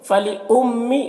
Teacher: میم مشدد ہے، غنہ کے ساتھ میں پڑھیں گے